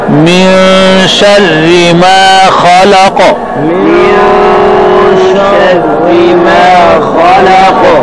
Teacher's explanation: ما خلق میں خا موٹی ہوگی، قاف میں قلقلہ ہوگا